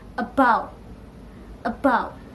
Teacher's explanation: the first consonant is voiced bilabial plosive